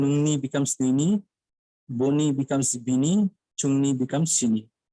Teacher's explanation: So Kokborok and Dimasa both exhibit regressive vowel harmony, whereby the vowels of the first syllable harmonize with the vowel of the second syllable in terms of tongue height. In other words, the vowel of the personal pronouns harmonize with the vowel of the genetic morpheme and plural morpheme.